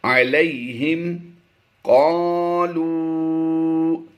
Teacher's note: واو مدہ کے بعد حمزہ دوسرے کلمے میں ہے تو مدے منفصل کرتے ہوئے ہم نے زیادہ لمبا کر کے پڑھنا ہے۔